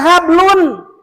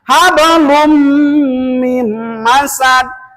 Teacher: Sebab ada tanwin domah, ke depan ada huruf mim. Menurut ilmu tajwid adalah idgham. Maka membacanya hablum mim masad.